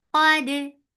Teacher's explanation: Qaf is heavy for Fatha open jaws attached with Dal. Dal will stay light because of Qaf.